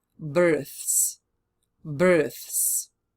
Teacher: The word birth finishes with a voiceless th sound